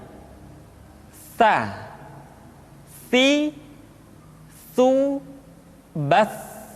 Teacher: Sa dikeluarkan dengan menyentuhkan ujung lidah kita dengan dinding dua gigi seri bagian atas. Diucapkan dengan suara dan nafas yang terdengar mengalir.